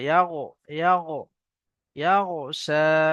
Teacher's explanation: গইন উচ্চারণ করার সময় মুখটা ঠোঁট দুটো একটু গোল হয়ে যাবে।